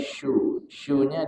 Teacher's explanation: huruf syin makhrajnya di tengah lidah bertemu dengan langit-langit nah syu ya bukan di hujung bukan di Su tapi syu